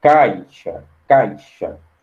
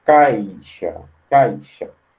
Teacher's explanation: E o som do A vai ser mais forte, vai ser mais alto. A entonação vai ser mais alta